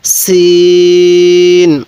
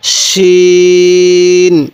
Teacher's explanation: সিনের আওয়াজটা একটু চিকন করে শক্ত করে উচ্চারণ করব, সিন। এরপরে শিন। এই শিনের আওয়াজটা একটু মোটা করে করব